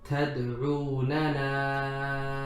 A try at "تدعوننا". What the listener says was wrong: you've done hams on the first ta, a little bit too much, but the dal does not have hams. So ta, da. Only sound, no air. تدعوننا. Now, there's a mud there, but nothing at the end. What does that mean?